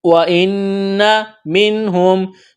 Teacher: نون ساکن کے بعد ہا ہے، حروف حلقی ہے، تو نون ساکن پر غنہ نہیں کریں گے، آواز ناک میں نہیں چھپائیں گے